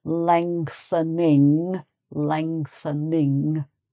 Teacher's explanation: so you've got an ing sound at the end as well as the ngs in the middle